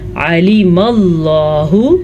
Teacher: لام کا مخرج لمبا نہ ہونے پائے، یعنی کہ کھڑی زیر نہیں پڑھنی